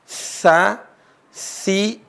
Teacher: Sa itu adalah ujung lisan ketemu dengan ujung gigi seri atas. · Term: huruf sa